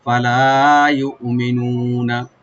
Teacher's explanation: ফালা ইউমিনুনা, ইউমিনুনা হামজাকে রাইট দিবেন, কলকালা হবে না। মি বলবো, নুন একালে টানবেন, লাস্টের নুনে কোনো টান নাই।